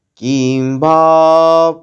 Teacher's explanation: কি এর পরে অনস্বরটা ম সাউন্ড শোনাবে, অর্ধেক ম, কারণ পরবর্তীতে প বর্গের ব আছে